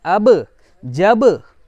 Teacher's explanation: तो मखरज टक्कर खाकर अलग होने का मतलब ये कि ऊपर नीचे के दोनों होंठ हैं वो टकरा रहे हैं और फिर अलग हो रहे हैं।